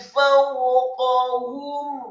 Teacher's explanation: Kemudian ila tayri fawqahum, kata fawqahum, fa-nya dibaca fathah satu harokat, kemudian wawunya dibaca sukun. Fawqahum, qafnya dibaca tafkhim tebal fathah satu harokat, kemudian ha-nya dibaca tafkhim tebal dhammah satu harokat, dan mimnya dibaca sukun. Fawqahum sa, mim mati atau sukun bertemu dengan huruf sad, maka hukum bacaannya adalah izhar syafawi, dibaca jelas, tidak boleh didengungkan atau diunnahkan.